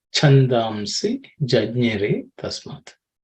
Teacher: The second line, the chandamsi, the cha is the second letter in the cha varga, so it has to be aspirated.